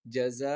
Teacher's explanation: اب یہ 2 زبر آگے اور حمزہ کے اوپر 2 زبر آگے، تو جیسا کہ ہم نے 2 زبر کا قاعدہ سیکھا ہوا ہے کہ اس پہ وقف کیسے ہوگا، 2 زبر جہاں پر آئیں تو وہاں پر ایک زبر پڑھ کر 1 الف کے برابر کھینچ کر وقف کریں گے